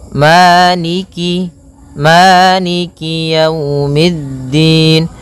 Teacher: kasrahnya juga disempurnakan jangan sampai dibaca dengan e tapi dia i